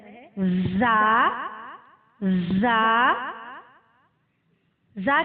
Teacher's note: زا کا مخرج ہے زبان کی نوک سے جب اوپر نیچے کے اگلے دونوں دانت آپس میں ملے تو اس سے زا ادا ہوتا ہے